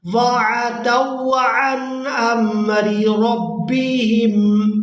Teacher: جو پہلی را ہے اس کے نیچے ہے زیر، اس کو باریک ادا کریں گے اور دوسری را کو پورا ادا کریں گے کیونکہ اس کے اوپر زبر ہے۔